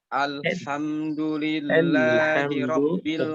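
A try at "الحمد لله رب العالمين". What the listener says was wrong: ترقيق الهمزة واللام دي بس. الحمد.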